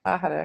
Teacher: And sort of no emphasis, like all syllables kind of get equal emphasis.